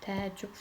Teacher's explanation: Yəni ənin biri düşür, biri isə uzanır. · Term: səs düşümü